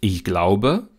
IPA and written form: ɪʝˈglaʊ̯bə (ich glaube)